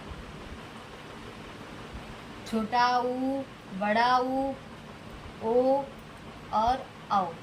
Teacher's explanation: होठ की आकृति वृत्त के जैसे हो जाती है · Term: वृत्ताकार स्वर